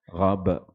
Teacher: ada qalqalah dekat ujung tu, dia melantun